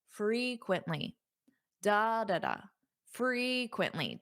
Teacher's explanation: It sounds louder on which syllable? Frequently. Da da da. Frequently. The first syllable. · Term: syllable stress